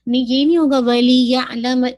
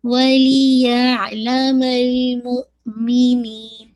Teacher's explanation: لی کی کسرہ کو شارپ رکھیے گا، یا کی فتحہ واضح ہو اور پھر آئین میں مرج کیجیے گا